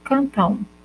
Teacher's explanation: Quando eu digo cantam, parece que eu estou falando, pronunciando U no final